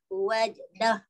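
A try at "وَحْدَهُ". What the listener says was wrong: Ha tu. Wahdahu. Ya, tapi saya nak pastikan awak sebut ha pedas. Wah.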